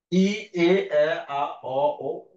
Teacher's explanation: তুমি খেয়াল করে দেখো যে উচ্চারণ করার সময় কিন্তু এই সিরিয়াল উচ্চারণ করবা, আমি যেভাবে লিখেছিলাম, ই, এ, আ, অ, ও, এটা বৃত্তের মতো, ই, এ, আ, অ, ও, মানে জিভটা উপর থেকে নিচে নেমে আবার উপরে চলে যাচ্ছে